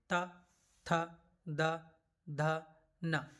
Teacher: इन्हें बोलने पर हमारे दांतों पर जीभ टच करेगी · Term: त वर्ग, दंत से उच्चारित वर्ण